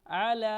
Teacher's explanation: عین حروف حلق ہے، اس کو ہم حلق سے پڑھیں گے